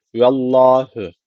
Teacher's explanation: ve Allah lafzı kalın okunacak Neden Çünkü öncesindeki herkese üstte yani Allah lafzına üstten bağlanılıyor